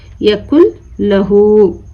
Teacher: نون کو چھوڑ کے ہم لام کو ملا کر پڑھ رہے ہیں